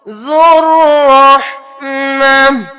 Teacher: کرنا، ذا پیش رو، جا کو ڈائریکٹ رو کے ساتھ ملائیے، واو بھی نہیں پڑھنا، الف بھی نہیں پڑھنا، لام بھی نہیں پڑھنا